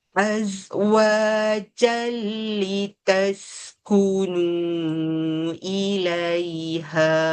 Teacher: Kalau sambung dia jadi idgham bila ghunnah. · Kalau berhenti azwaja jadi mat iwat kena 2 harakat. Kalau sambung dia jadi idgham bila gunnah, masukkan tanpa dengung.